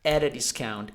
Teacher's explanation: So, see how everything seems to stick together at a discount, and the T becomes a D, and the A becomes an E, so at a discount.